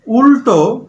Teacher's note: উল্টো, এই লটা যখন উচ্চারণ করছি একটু খেয়াল করো, জিভটা মূর্ধায় গিয়ে স্পর্শ করছে। উল্টো, জিভটা একটু উল্টে মূর্ধায় গিয়ে স্পর্শ করছে, এই ল হচ্ছে মূর্ধন্য ল